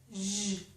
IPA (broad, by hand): ʒ